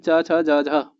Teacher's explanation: स्पर्श संघर्षी आपके 4 होते हैं, जिसमें चा, छा, जा, झा आपके स्पर्श संघर्षी होते हैं।